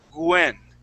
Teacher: Sometimes people who speak Spanish, they pronounce that W as a G and they say Gwen. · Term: G sound